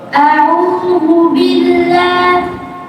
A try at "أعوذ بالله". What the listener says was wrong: ওটাই করতে হবে, জিব্বাটা লাগাতে হবে, জিব্বাটা পিছনে নিয়ে গিয়ে কমফোর্ট জোনে গিয়ে, হ্যাঁ, যেখানে নিজের সুবিধা সুবিধা মতো বললে হবে না, সুবিধাবাদী হওয়া যাবে না, সুবিধাবাদ দিলে হতে হবে, অসুবিধা করে করতে হবে। আবার আবার জিহ্বা পাকানো যাবে না, জিহ্বা সোজা রাখতে হবে। তুমি পাকাচ্ছ, পাকালে কি মোটা হয়ে যাচ্ছে।